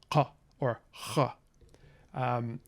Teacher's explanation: the sound is made by contact or near contact of the back of the tongue against the uvula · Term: uvular sound